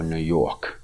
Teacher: The characteristic is that they don't pronounce the R. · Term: non-rhotic variety